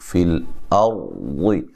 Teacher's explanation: را کو موٹا ادا کریں گے، ٹھیک ہے، را ساکن سے پہلے حرف پر زبر ہے